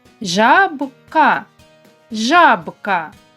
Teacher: Ставимо наголос над першим звуком а.